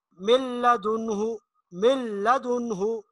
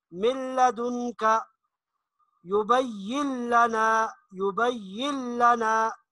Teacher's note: اب ان میں 2 حروف آپ کے ایسے بتائے تھے کہ جن میں ادغام تو ہوگا لیکن غنہ نہیں ہوگا، غنہ نہیں ہوگا، بالکل نون کی آواز نہیں آنی چاہیے. اور وہ 2 حروف ہیں لام اور را. · جیسے من لدنہ، من لدنہ، نون بالکل نہیں پڑھنا، میم کو لام کے ساتھ ملا کر پڑھیں گے